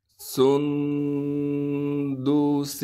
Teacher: سندس، سین کو صاف کر کے ادا کریں گے، سین کو نون سے ملائیں گے اس لیے کہ نون ساکن ہے، نون پر اخفا یعنی غنہ کریں گے، دال کو بغیر کھینچے پڑھیں گے، اس سین پر غنہ نہیں کیا جائے گا۔